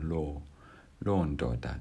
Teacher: notice that it's a falling tone so it's a long o and it's going down